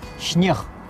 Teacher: гукі З і С змягчаюцца перад тым, як стаяць перад мяккімі зычнымі, апроч Г, К, Х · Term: асіміляцыйная мяккасць